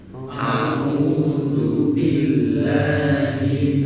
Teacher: Makhrajnya tenggorokan, bagian pangkal, harokatnya kasrah.